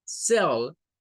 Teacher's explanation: la letra C se pronuncia como una S, como una S silbante, cell, y es la sílaba tónica, es la que lleva más fuerza, cell.